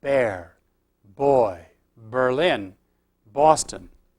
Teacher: These all have voiced labial initials characteristic of English. If you observe closely, you will probably feel vibration of the vocal cords during the moment when you pronounce the initial B in the English word just before the beginning of the vowel.